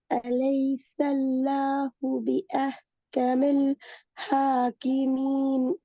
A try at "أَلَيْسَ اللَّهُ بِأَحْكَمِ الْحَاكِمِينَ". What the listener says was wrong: ஹாக்கிமீன் அது பிழை. எத்தனை செகண்ட் இழுக்கணும்? யாக்கு சுக்குனா எத்தனை செகண்ட் இழுக்கணும்? ஒரு செகண்ட் தானே இழுக்கணும். இந்த இடத்துல ஒரு செகண்ட் இழுத்து ஓதினா பிழையே.